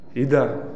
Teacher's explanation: بعض لوگ ہدا پڑھ دیتے ہیں، حمزہ کو واضح کرنا ہے، حمزہ ہے علی علی الافئدہ، ادا، جزاک اللہ۔